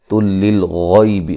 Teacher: غین کو موٹا ادا کریں گے